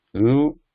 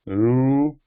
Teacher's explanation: So both are similar, and ru, only the timing is different, the duration. Ru is shorter, ru is longer.